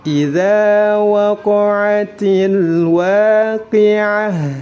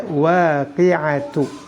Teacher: mewakafkan sebuah kata yang diakhiri ta' marbuthah. Jadi yang pertama adalah membacanya dengan sukun, dan yang kedua merubahnya menjadi huruf ha.